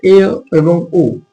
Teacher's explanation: এ এবং ও এই দুটি ধ্বনি উচ্চারণ করার সময় সংবৃত থেকে কিছুটা বেশি খুলছে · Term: অর্ধ সংবৃত